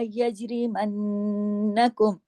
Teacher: नून पे लंबा गुन्ना, कौन सा? अकमल गुन्ना, क्यों? क्योंकि नून पे तशदीद है, 2 नून है। यज, और जीम पे कलकला, यज, आवाज को हिला के, यजरिमन्नकुम।